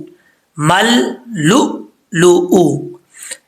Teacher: یہاں حمزہ ساکن ہے، جھٹکا دیں گے پر جھٹکے میں قلقلہ نہیں کریں گے